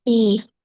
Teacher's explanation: Ditukar penekanannya. Intonasi yang tinggi di depan.